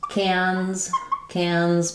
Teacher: making sure that n and z sound don't drop